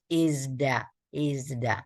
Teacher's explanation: terjadi letupan maka diubah menjadi yang lembut izda izda